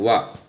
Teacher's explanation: దంతోష్టిం అంటే దంతము మరియు పెదవి రెండు కలిపి పలుకుతాం